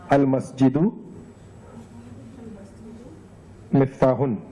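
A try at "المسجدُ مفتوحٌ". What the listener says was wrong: Do you see an alif after ta? No, right? Correct? So check again. Al-masjidu maftuhun.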